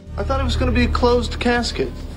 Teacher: the tap T can appear even between two words, when one ends in a T and the next begins in a vowel